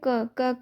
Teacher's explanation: तो इसमें क क्या है? अल्प प्राण है और अघोष है